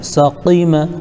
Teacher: سقیمہ میں سین میں سیٹی کی آواز آئے گی اور قاف کو صحیح ادا کرنے کی کوشش کرنا ہے